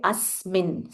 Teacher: Asmin, half sa followed by full mi. So you say asmin, stress on that sa.